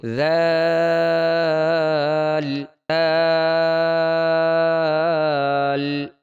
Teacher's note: دانتوں کے درمیان میں زبان کی نوک آئے گی تو زال ادا ہوگا۔ زال کے اوپر ایک نقطہ ہے، یہ نرمی سے ادا ہوگا۔